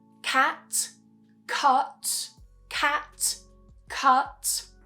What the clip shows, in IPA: æ and ʌ